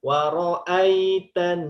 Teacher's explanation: kena hukum gunnah, nun bertasydid 3 harokat. Waro'aitan, ditahan.